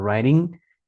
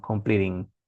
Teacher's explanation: Cuando ustedes encuentren in gualquier verbo, la pronunciación no hace sonar fuerte la g.